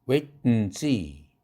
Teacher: and 할 때 A는 소리가 안 납니다.